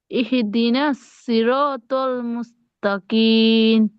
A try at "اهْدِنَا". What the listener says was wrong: ইহি ইহি হয়ে যাচ্ছে, হাঁটাতে ব্রেক ধরতে হবে, ইহ ইহদি ইহদি